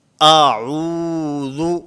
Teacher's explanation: ذال کی ادائیگی میں زبان کا تعلق ہوتا ہے، زبان یہ سامنے دانتوں سے ٹکراتی ہے۔